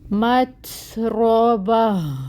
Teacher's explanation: گول ہا یعنی اس میں ہم ہمس کو آخر میں واضح کریں گے